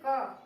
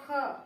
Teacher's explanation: जैसे क और ख, दोनों को बोलने में पता चल रहा है कि एक को बोलने में कम वायु निकल रही है बाहर और दूसरे को बोलने में मुख से अधिक वायु निकल रही है।